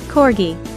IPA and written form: ˈkɔːrɡi (Corgi)